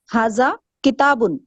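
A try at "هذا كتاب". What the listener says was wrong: ایک ساتھ بولیں، بیچ میں پوز نہیں دیں. ہاں بالکل، سینٹنس جو آپ ہمیں ورڈ بائی ورڈ نہیں دیں، ایک سینٹنس دیں. تو جیسے آپ اردو میں کہتی ہیں یہ ایک کتاب ہے، تو آپ ایسے تو نہیں بولیں گی یہ ایک کتاب، ایسے نہیں بولیں گے نا، پوز نہیں دیں گے بیچ میں.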